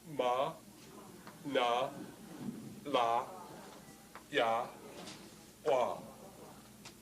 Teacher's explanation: when you make these, the glottal stop, the hard part of it, really comes before the M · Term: hard sonorant